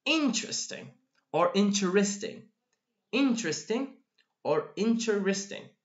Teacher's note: here while here exactly we've got three syllables so basically basically four syllables goes down to three syllables